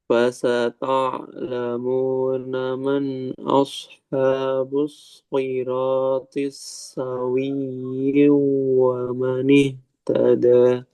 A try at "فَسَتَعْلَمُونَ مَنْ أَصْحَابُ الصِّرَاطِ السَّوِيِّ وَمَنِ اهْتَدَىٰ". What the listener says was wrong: Ini kasro ya, jangan yung, siratis sawi wa manih tada.